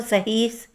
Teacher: हिंदी की अन्य बोलियों की भाति अवधि में भी हा का आगम